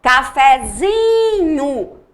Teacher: agora a sílaba tônica mudou. Mudou para cafezinho, para o zi. O fé da palavra cafezinho é uma sílaba subtônica. · Mudou para cafezinho, para o zi. O fé da palavra cafezinho é uma sílaba subtônica. Por quê? Porque anteriormente, né, quando a gente não derivou essa palavra, a tonicidade era o fé e agora é o zi, tá?